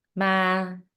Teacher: In Vietnamese, there are 6 tones that can change the definition of a word. The mid-level tone, ma, means ghost. The high-rising tone, ma, means mother in the Southern Vietnamese dialect we speak at home.